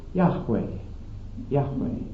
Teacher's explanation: J in Hebrew is always pronounced like a Y to us, and that V in Hebrew is always pronounced like a W in our language